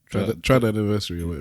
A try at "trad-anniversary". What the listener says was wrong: Triad. Trad-anniversary. Because you said triad.